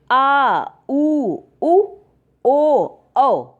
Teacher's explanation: जिन स्वरों के उच्चारण में जीभ का पश्च भाग काम करता है उन्हें हम पश्च स्वर कहते हैं।